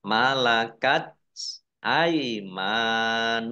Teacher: Malakat tak sukun ya. Ini T-nya ada keluar S sedikit gitu ya.